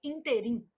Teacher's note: a palavra interim apresenta erro de prosódia quando pronunciada como oxítona, que aí a pronúncia seria interim.